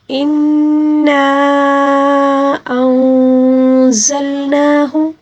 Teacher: نون مشدد کو ہم نے صرف ایک الف کے برابر کھینچ کر پڑھنا ہوگا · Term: نون مشدد کا غنہ